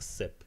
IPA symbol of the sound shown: s